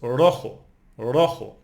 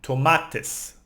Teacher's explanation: So we have rojo, it's red, It ends in O, so we don't emphasize the last syllable. We emphasize the second last syllable.